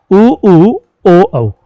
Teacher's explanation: ऐसे चार वर्ण है जिनका उच्चारण करते समय होठ गोल हो जाते हैं। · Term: वृत्त मुखी